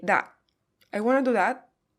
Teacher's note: Again, that is with stop T.